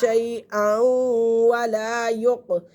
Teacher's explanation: क़ाफ़ के ऊपर क़लक़ला हो रहा है